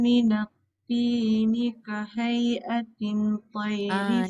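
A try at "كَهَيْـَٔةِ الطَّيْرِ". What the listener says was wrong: Jangan atin. Kalau atin dia jadi nun. Kahai'atit toy. Ya. Kahai'atit toy.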